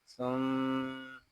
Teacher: यहाँ मीम शदद है, इसको गुन्ने के साथ अदा करेंगे